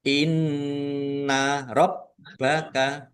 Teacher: Qof lam tanda wakaf boleh terus tetapi berhenti lebih baik. Inna rbaka nun tasdid bacaan ghunah atau mendengung ditahan. Setiap ada nun tasdid dan mim tasdid itu harus dibaca ghunah atau mendengung. · nun tasdid bacaan gunnah atau mendengung ditahan